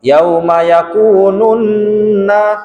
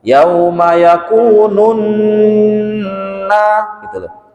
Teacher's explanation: Jadi dengung, intinya tuh dengung yang lama di nun bertasydid itu.